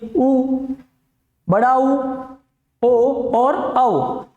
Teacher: गोलाकार आकृति में जब होट आते हैं तो उनको अपन कहते हैं वृताकार आकृति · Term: वृताकार स्वर